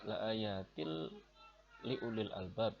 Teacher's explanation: Kemudian ada idgham, kemudian ada lafaz la ayatil liulil albab ya, ini dibaca hukum bacaannya adalah idgham bila gunnah ya, karena tanwin bertemu kasroh, tanwin kasroh bertemu lam